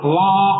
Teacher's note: மேல் பல்வரிசை கீழ் உதட தொட்டாக்கா வான்னு சொல்ல முடியும். தொடாது ஆதான் சொல்ல முடியும்.